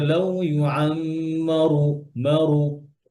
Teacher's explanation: يود أحدهم يود أحدهم لو يعمر ألف سنة وما هو بمزحزحه من العذاب أن يعمر والله بصير بما يعملون আরেকটা জিনিস খেয়াল করেন, যখন হচ্ছে রতে যখন দম্মা হয়, পেশ হয়, দম্মা হয়, তখন তখন র মোটা থাকবে